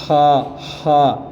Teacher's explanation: یہ ہا جو ہے حلق کے اوپر والے حصے سے ادا ہوگی